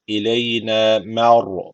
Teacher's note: ra harfi cezimli. Öncesindeki harf üstten bağlandığı için ra harfi kalın okunacak.